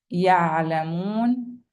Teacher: When carrying a sukun, Ain, the sound can be extended.